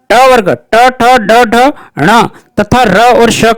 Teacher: ट वर्ग ट ठ ड ढ ण तथा र और श का उच्चारण स्थान मूर्धा है